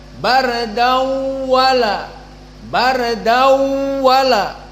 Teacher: Maka dawala ini dinamakan idgham, tanwin kepada waw daw, dan ada dengung daw